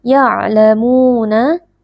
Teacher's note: ada wau sukun yang sebelumnya berharakat damah dibaca panjang dua harakat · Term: Mad thi'i